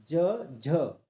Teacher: ज झ तालू में टच होती है इसलिए तालव्य कहते हैं